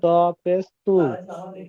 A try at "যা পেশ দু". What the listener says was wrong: তো নয়, যা।